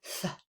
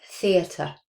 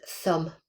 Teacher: this first one is the voiceless dental fricative. So that is a th sound.